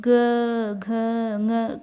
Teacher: जब ग, घ, ङ का उच्चारण करते हैं तब स्वर तंत्रियों में कंपन ज़्यादा होता है। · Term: सघोष